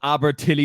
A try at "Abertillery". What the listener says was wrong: Abertillery. He was close. Forgot the R.